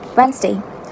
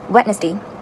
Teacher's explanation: So the right pronunciation for this word is that the NES, ness, is silent.